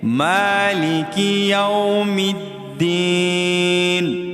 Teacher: یہ دیکھیں، مالک یوم الدین، میم کو ایک الف کی مقدار ہم کھینچیں گے